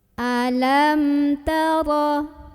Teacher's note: cara membaca mim sukunnya ini adalah dibaca dengan jelas, bunyi dan tidak perlu ditahan. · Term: idhar syafawi